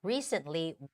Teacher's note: when you're reading the word recently we get rid of that t sound